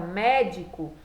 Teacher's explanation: a palavra médico por ser a antepenúltima sílaba mais forte vai ser considerado uma palavra proparoxítona